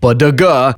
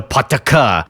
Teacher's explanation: In plain English, at the end of a sentence, if the last word ends in a voiced consonant like padaga, devoice it to pataka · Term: Final consonant devoicing